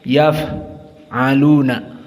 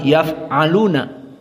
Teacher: Ma yaf'aluna, fa sakinah dalam keadaan sifatnya hams, yaf'aluna. Maka jaroyan an-nafs inda nutq, di saat dibaca dan disukunkan keluar nafas.